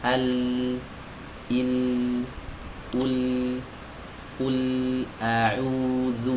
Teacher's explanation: tepi lidahnya naik ke atas ya, di ee tempelkan atau dipertemukan dengan muqaddamul hanaq ya, langit-langit bagian depan ya ditempel. · Oke, ketika proses menempel ini, suara yang tadinya mau keluar, nah, itu ada bagian lidah yang menghalangi suara untuk keluar, sehingga sebagian suara itu terhalang, sebagian lagi keluar lewat jalur samping kanan dan kiri, melenceng suaranya. Inilah yang disebut dengan inhiraf. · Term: huruf lam